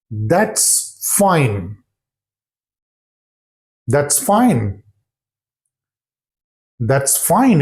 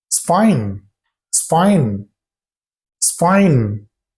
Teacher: sentence but if you happen to listen to the speech of native speakers they completely drop out the word that